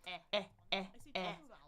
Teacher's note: My tongue is forward. My jaw is pretty open there